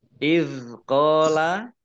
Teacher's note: bukan qalqalah, tidak dimantulkan.